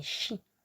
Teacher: si c'est suivi de la voyelle I, que je viens de faire à l'instant, que ça soit un S ou deux, on ne prononcera pas si, mais chi.